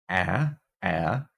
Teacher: this is our low front unrounded vowel so this is going to be a the ash symbol I